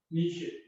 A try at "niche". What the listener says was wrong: Niche. Niche. This last E is not pronounced.